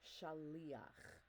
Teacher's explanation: Again, not trying to add a guttural between the lamed and the last syllable, which happens to be before the cha.